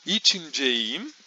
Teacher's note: a gente tem a vogal I na raiz, então todas as outras vogais devem também ser anteriores, assim como I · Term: harmonia vocálica